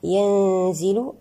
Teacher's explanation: النون مع الزاء هنا لدينا حكم الإخفاء الحقيقي بغنة مرققة المرتبة الوسطى